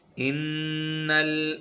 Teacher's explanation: गुन्ना कहते हैं नाक से इस तरीके से आवाज़ निकले, इस तरह से आवाज़ निकले कि वो सख्ती महसूस हो और बिन बिनाहट हो, बिन बिनाहट महसूस हो, इसे कहते हैं गुन्ना। 1 अलिफ के बराबर नाक में आवाज़ को ठहराएंगे। नून मुशद्दद और मीम मुशद्दद पर हमेशा गुन्ना होता है।